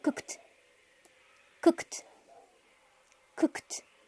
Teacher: Si tú te tocas la garganta y dices la letra K, te vas a dar cuenta que las cuerdas vocales no vibran y por lo tanto eso se pronuncia con T